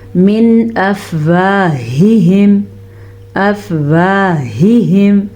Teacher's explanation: دونوں ہاں ہیں تو دونوں کو حلق سے نکالیں گے اور خیال سے نکالیں گے، کہیں یہ ہاں میں نہ بدل جائیں. · من افواہہم، نون ساکن کے بعد حمزہ آ گیا ہے جو کہ حروف حلقی میں سے ہے، تو ہم نون ساکن کو ظاہر کر کے پڑھیں گے اور بغیر غننے کے پڑھیں گے